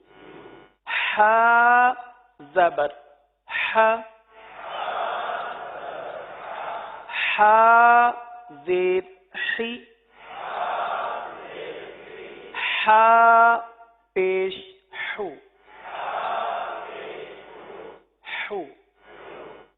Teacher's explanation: اس کا جو مخرج ہے وسط حلق یعنی حلق کا درمیان حلق کا درمیان یہاں سے